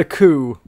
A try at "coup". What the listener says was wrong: You don't pronounce the P.